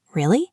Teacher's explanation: If you say really with a falling pitch, really, it sounds like you don't care or you are disappointed. If you say really with a rising pitch, really, it sounds surprised. If you say really with a high low high pitch, really, it sounds sarcastic.